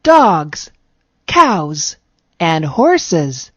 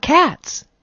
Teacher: s is also pronounced as z at the end of some plural words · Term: z sound